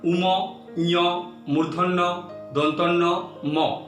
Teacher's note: শ্বাসবায়ু কেবল মুখের মধ্যে দিয়ে বেরিয়ে আসে না, নাকের মধ্য দিয়েও নির্গত হয়। সেজন্য এই বর্ণগুলিকে বলে নাসিক্য বর্ণ।